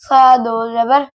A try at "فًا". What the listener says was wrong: دوبارہ سیٹی جیسی آواز نہیں آنی چاہیے